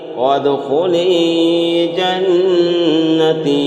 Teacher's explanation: جنتی میں غنہ نون مشدد ہے